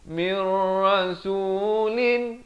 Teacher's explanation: Qablika mir, idgham bila gunnah. Bukan min, tapi mir, masuk tanpa dengung